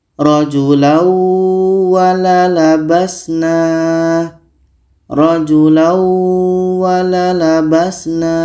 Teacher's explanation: Waw adalah huruf idgham bi gunnah. Maka ini tanwin ini kita masukkan ke waw dan kita dengungkan.